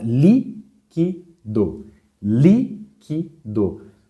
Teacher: palavra proparoxítona então exemplo a palavra liquido liquido você vê que a sílaba cuja intensidade é maior é a anti penúltima vamos contar última do penúltima é o que e a antepenúltima